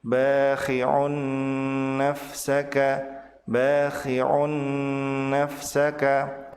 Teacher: Sementara tanwin bertemu dengan nun disebut sebagai idgham bi gunnah, yaitu tanwin dilebur ke huruf nun dan ditahan 2 harokat disertai dengan gunnah.